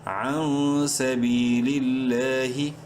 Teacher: لفظ اللہ سے پہلے بھی لام کے نیچے زیر ہے، اس لیے لام کو بولڈ نہیں کرنا، لمبا ضرور کریں گے ایک الف کے برابر